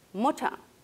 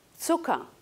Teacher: la geminación de consonante, es decir, la duplicación de consonante, acorta la vocal precedente. Si tenemos dos consonantes y antes una vocal, esta siempre va a ser breve. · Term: U breve